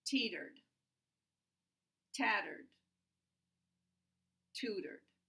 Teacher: They begin with the [t] sound, they have a tap in the middle, and they end with a [d] sound